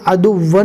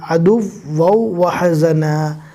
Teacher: دھیان سے پڑھنا ہے، عدوً نہیں پڑھنا، واو کو واو کے ساتھ ملانا ہے اس لیے کہ بعد میں آنے والے واو کے اوپر بھی تشدید ہے، عدو وحزنا۔